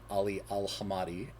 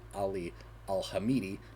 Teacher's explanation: I'd likely been mispronouncing ali al-hamadi as ali al-hamidi just botching the second vowel in the last name